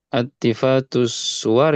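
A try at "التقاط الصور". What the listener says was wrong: Iltiqatus suwar. Yang betul pakai qaf bukan pakai fa. Iltiqatus suwar. Iltiqatus suwar. Iltiqatus suwar. iya ada kesalahan cetak. Qaf. Iltiqatus suwar.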